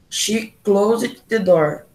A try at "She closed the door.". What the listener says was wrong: Ó, presta atenção, é pra não falar esse E aqui. Esse E que tá aqui. Então, é como se tu fosse falar só assim, ó. Então, nesse caso, no close, apesar de ser um S, ele tem som de Z.